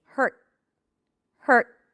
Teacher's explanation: So, for the word hurt, as in you hurt my feelings, I bring the tip of the tongue up and I block the air immediately. Hurt. Hurt hurt.